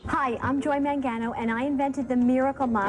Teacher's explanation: this is a really recognizable Long Island accent. It's marked by a bunch of things. One of those things is nasality.